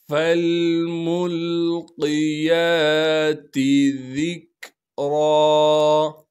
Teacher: ذا کو نرم کر کے باریک کر کے پڑھنا ہے